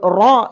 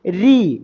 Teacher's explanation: രി എന്ന രൂപത്തിലുള്ള ഉച്ചാരണമാണ് തർക്കീ ആ സമയത്ത് നാവിൻറെ മധ്യം കുഴിയുകയോ തൊണ്ടയുടെ ഇടുങ്ങുകയോ ചെയ്യില്ല രണ്ട് ഫോട്ടോ നോക്കിയാൽ നിങ്ങൾക്ക് കാണാം തൊണ്ടയുടെ ഗ്യാപ്പ് കുറച്ചുകൂടി വീതി കൂടുതൽ ആയിരിക്കും